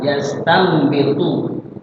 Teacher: Tiap nun mati ketemu ba yastanbitu nun ada ketemu ba iqla ada mimnya di huruf kecil jadi dibacanya bukan nun tapi mim